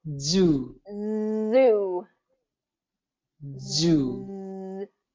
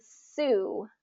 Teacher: Okay, so that the only difference there is that the Z is a voiced sound, so your voice is going to turn on, and the S is a voiceless sound.